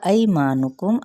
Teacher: عقدت، قاف کو پر پڑھا جائے گا، دا پہ تا پہ ہمس ہوگا۔ ایمانکم، ای پہ یا لین کا قاعدہ، ما پہ مد صلیب الف اور میم پہ اظہار شفوی